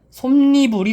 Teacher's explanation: 솜이불도 마찬가지로 솜과 이불이 결합된 합성어이고요. 그리고 종성은 있지만 초성이 없으니 니은이 들어올 수 있는 조건이 충분하구나. 솜니불이 되는 겁니다. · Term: 니은 첨가